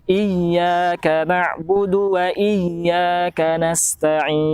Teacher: harus lebih dipertegas lagi huruf ya ketika bertasydid